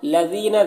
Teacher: دال کو باریک پڑھیں گے اور یہاں پر یا مدہ ہے